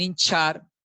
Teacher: en hinchar casi que no hay contacto y además la lengua se va un poquito más para atrás